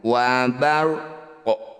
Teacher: ketika ada di ujung bacaan kita sukunkan dan pantulkan waarqun ketika dihentikan warqo jadi ada pantulan namanya qolqalah Kubro qolqolah · Namanya qalqalah kubro. Qalqalah artinya memantul, kubro itu besar. Jadi pantulannya betul-betul diperjelas.